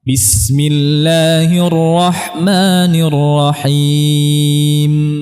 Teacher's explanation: huruf mim kita jelaskan mengalirnya gunnah. Dia mengalir tapi tidak sepanjang rakhawah.